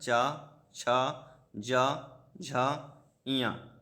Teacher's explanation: तालव्य में ये तालु से बोला जाता है, मुंह के भीतर की छत का पिछला भाग यूज होता है इसमें। इसके अंतर्गत चवर्ग आता है, चा, छा, जा, झा, इया।